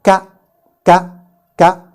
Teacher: So Qaf is produced between the root of the tongue and the soft palate against it, while KAAF is produced between the part of the tongue which is above the root towards the mouth and the hard palate against it